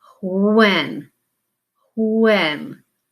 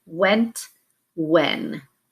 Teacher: we've kind of lost that beginning sound for the digraph of the WH and we really pronounced it the same